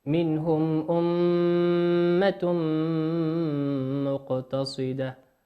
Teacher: الميم مشددة تغن بمقدار حركتين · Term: إشباع الغنة